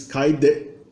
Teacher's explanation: a consoante final é gu, é uma consoante sonora, então ela sonoriza o T, que vira D.